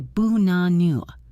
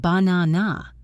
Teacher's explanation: You probably think it has 3 A sounds, ba-na-na, but it does not. The first A is a schwa. The last A is a schwa. Only the middle A is a real A.